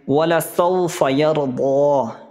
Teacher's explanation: سو میں واو لین ہو رہا ہے، جلدی سے پڑھیں گے، یرضا، را ساکن سے پہلے زبر ہے، را کو پر پڑھیں گے۔